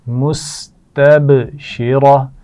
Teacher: سین میں سیٹی کی آواز آئے گی